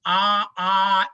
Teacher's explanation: अस्माकं तु केवल अकारः अपि विवृतः, प्रयोगदशायामपि विवृतः, उभयत्रापि विवृतः अस्ति दाक्षिणात्यानां।